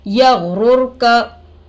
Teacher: रा पर जज़म आकर है रोए साकिना होगा। रोए साकिना से पहले पेश आकर है रा को पुर करके पढ़ेंगे